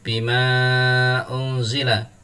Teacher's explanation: Ada mad tabi'i fathah bertemu alif, kemudian bertemu dengan hamzah, bertemunya sudah berlainan kata. Cara membacanya dibaca panjang sampai dengan 5 harokat. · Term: mad jaiz munfasil